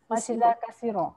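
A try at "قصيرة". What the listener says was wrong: Tak nak ka ya, qa. Ya, qasirah ya. Okey, waqafnya wabih pendek je ya.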